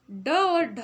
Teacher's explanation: ड और ढ जो है इनको उच्चारित करने में हमें मूर्धा का उपयोग करना रहता है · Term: मूर्धन्य व्यंजन